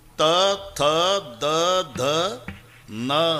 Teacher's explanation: तथ दध न किती ताकद लावून धक्का मारते जीभ आतून दाताला.